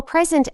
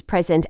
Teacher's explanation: exactly or present as a noun versus present as a verb the first one has stress on the first syllable and the second one has stress on the second syllable